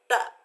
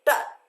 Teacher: हमारी जीभ जो है सीधी कहाँ जा रही है, हमारे तालु को टच कर रही है, और टच करने के बाद झटके से वायु जो है बाहर निकल रही है। इसका मतलब स्पर्श व्यंजन है, क्योंकि हमने आपको स्पर्श व्यंजन में बताया है कि जीवा जो है किसी भी भाग को टच करती है और बाहर झटके से बाहर निकलती है।